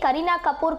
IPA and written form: kəˈriːnaː kəˈpuːr (Kareena Kapoor)